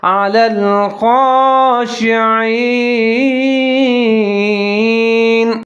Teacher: اب یہاں پر خا کو موٹا کر کے پڑھنا ہے، دوسرا خا کے اوپر ایک کھڑا زبر ہے تو ایک الف کے برابر اس کو لمبا کر کے پڑھیں گے